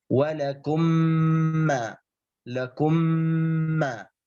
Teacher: فتضغم الميم الساكنة في الميم المتحركة إدغاما بغنة مقدار حركتين، إدغام بغنة مقدار حركتين، فتنطق بالميم الثانية مشددة، مثل ولكم ما، لكم ما. · الميم الأولى ساكنة الثانية متحركة، فتضغم الميم الأولى في الثانية فتصبح ميما واحدة مشددة · mim yang pertama yang sakin dimasukkan ke dalam mim yang mutaharrik di depannya menjadi mim yang musyaddadah, menjadi mim yang bertasdid yang dibaca di syaddah yang kedua, di huruf yang kedua. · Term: idgham